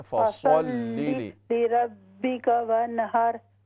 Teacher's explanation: फसल, स्वाद मोटा करके पढ़ें